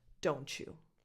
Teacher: if you don't skip the letter T, and so you connect it to the Y, you get this ch sound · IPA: [tʃ]